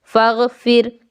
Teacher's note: इस अलिफ़ को नहीं पढ़ा जाएगा क्योंकि इस अलिफ़ में कोई स्वर नहीं है। इसीलिए फा को घैन के साथ जोड़ा जाएगा। · मैं रा को हल्के ढंग से पढ़ता हूं क्योंकि साकिन रा से पहले एक कसरा है